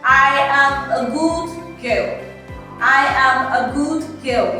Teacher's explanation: everything started from the top, then it started coming until at the final end it came down